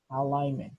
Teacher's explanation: A gente não pronuncia esse G